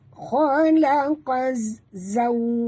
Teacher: Waw sifatnya lin atau huruf lin, maka kita sebut tu dengan lembut dan muncungkan mulut